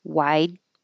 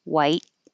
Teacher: So the vowel will be a little bit longer than the vowel in white with the T because t is voiceless. So the vowel is a little shorter.